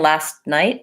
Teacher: Of course, if I'm saying last night, I might use a stopped T where I'm saying last and I move into the T position and don't release the air